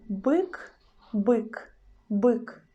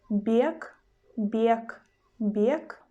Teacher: we pronounce letter B as a hard sound B. But in the word bek, bek, bek, we pronounce letter B as a soft sound b